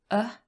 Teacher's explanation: this is a schwa that's central vowel sound very important sound